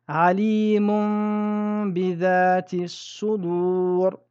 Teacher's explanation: La première chose qui s'est passée, nous avons changé le nun en mim. La deuxième, nous avons respecté la runna. La troisième, nous avons caché le mim. L'erreur ici serait de lire alimun bidhati sudur ou de lire alimum bidhati sudur. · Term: al-iqlab